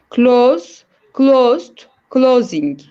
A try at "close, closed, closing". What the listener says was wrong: Actually, when we read this, this has the sound of like Z. Close. Okay, close, closed, closing.